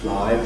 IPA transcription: flɑɪ